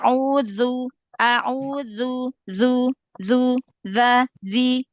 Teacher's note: gesek sedikit ya biar enggak kayak dal jadi rakawahnya terdengar ya